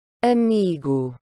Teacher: quand le O est en fin de mot, il ne va pas juste se prononcer O, mais vraiment OU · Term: son OU